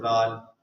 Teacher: زبان دانتوں کے درمیان میں رکھی